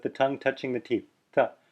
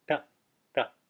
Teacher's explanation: So this T without the dot under it is pronounced th, with the tongue touching the teeth, th. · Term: dental